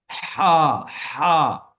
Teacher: हा आवाज गले से रगड़ कर बाहर की तरफ निकलेगी। हा हा, ये आपने महसूस करना है।